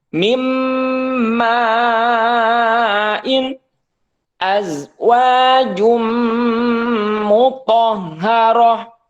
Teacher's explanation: jadi nunnya dihilangkan karena sudah dimasukkan ke huruf mim azwajum mutar ya kemudian selanjutnya adalah ww nun mati atau tanwin